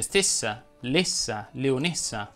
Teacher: anche le desinenze in essa richiedono una pronuncia chiusa